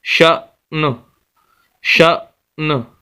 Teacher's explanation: نون کو پڑھیں گے لیکن تنوین نہیں پڑھی جائے گی کیونکہ نون ساکن ہو چکا ہے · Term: وقف